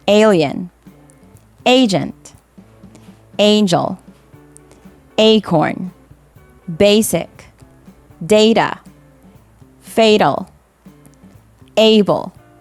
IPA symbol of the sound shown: eɪ